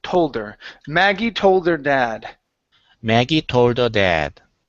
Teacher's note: Yeah. So, you want to drop the H. Okay. But give me a hard D sound.